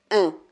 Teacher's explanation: un son qui se prononce un peu avec le fond de la gorge et avec le bout du nez. Voilà, le son qui est impossible de dire avec le nez bouché.